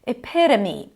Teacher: Flap T, if we're thinking about American pronunciation